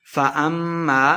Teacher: فأما میم مشدد ہے، غنہ کر کے پڑھیں گے۔